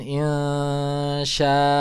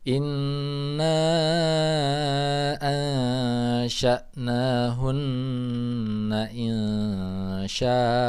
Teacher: ketika ada fathah tanwin yang diwakafkan, maka dia menjadi mad iwad. Jadi harus dipanjangkan. Jadi ketika di akhir itu bacanya bukan insya.